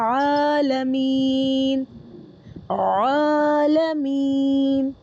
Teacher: اس کو نا عین کو کھینچ کر پڑھنا ہے ہمیں یہاں پر